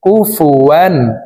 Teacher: ওয়ালাম ইয়াকুল্লাহু ওয়ালাম ইয়াকুল্লাহু কাফ পেশকু ফা পেশফু ওয়াও আলিফ দুই জবর ওয়ান তানউইনের পরে ইজহারের 6 হরফের একটি হরফ হামজা আসছে এই কারণে এই তানউইন ওয়ালা ওয়াওটি গুন্না ছাড়া স্পষ্ট করিয়া পড়ব